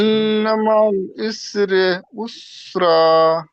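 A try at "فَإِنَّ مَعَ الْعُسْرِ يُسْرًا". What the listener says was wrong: ইসরাটা প্রথম হয়ে যাচ্ছে, উসরি ইউসরা, ইউসরাটা লাস্টে। ইন্না মাআল উসরি ইউসরা।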